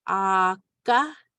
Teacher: we have the double A, which we know is a longer ah sound. So we have Aka, and it's pronounced with the K.